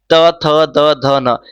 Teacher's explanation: हमारी जीभ किससे टच हो रही है? तो दांत से टच हो रही है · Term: दंतव्य